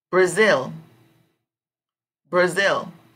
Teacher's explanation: The strong syllable, I think, will come over zil, because it's Brazil, Brazil. So the strong syllable would come over zil.